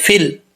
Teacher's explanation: فا کو لام سے ملائیں گے، بیچ میں جو الف ہے اور یا ہے گر جائے گا